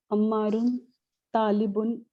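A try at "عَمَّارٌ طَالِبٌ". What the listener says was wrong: Mm-hmm.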